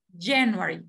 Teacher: el acento o la sílaba tónica es la primera